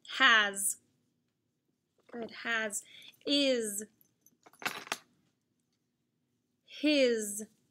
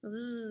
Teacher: And Z is the voice sound because it's vibrating like the TH. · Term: Z sound